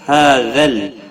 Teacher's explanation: ہا کے اوپر کھڑی زبر ہے، ایک الف کے برابر کھینچ کر پڑھیں گے